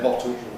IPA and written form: ˈbɒto (bottle)